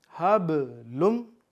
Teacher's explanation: अब हब पे भी कलकला है, यानी कि आवाज़ लौटाएंगे